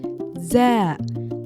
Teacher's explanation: A flat buzzing Z like English.